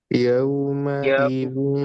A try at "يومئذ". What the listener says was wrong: Jangan sampai jelas nunnya. Din, din, yang benar disamarkan. Zil, zil. Kemudian tipiskan sama kayak ini. Nun sukun batu mesin. Iya, zil. Bunyinya sama. Yauma idzil.